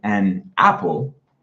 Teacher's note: the n will separate the a, the soft vowel sound, from the following word